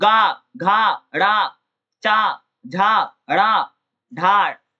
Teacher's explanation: स्वर तंत्री कंपित होती है उन्हें घोष कहा जाता है